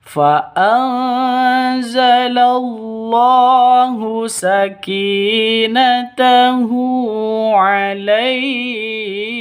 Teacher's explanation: Sakinatahu ki panjang 2 ketukan karena ada ya mati, ini ya mati, ya sukun diawali dengan kasroh, mad asli atau mad tabi'i.